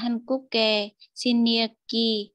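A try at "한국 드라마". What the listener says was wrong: Từ từ em ơi, Hankuk xin liếc chứ không có Hankuk ke xin liếc đâu ạ.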